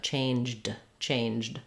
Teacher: we have to go right to a D from the J, changed, changed.